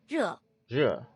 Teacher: You gotta make sure to get that falling tone too.